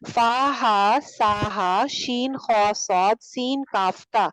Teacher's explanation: फा हा सा हा शीन खौ सौद सीन काफ ता, ये वाले जो लेटर्स हैं इनके ऊपर सांस जारी रहता है